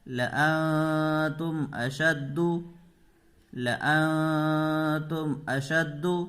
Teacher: قاعدہ ہے تنوین یا نون ساکن کے بعد حروف اخفا میں سے کوئی حرف آئے تو نون کی آواز کو ناک میں چھپا کر غنہ کے ساتھ پڑھیں گے